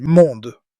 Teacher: Listen for the nasal vowel sound in the middle.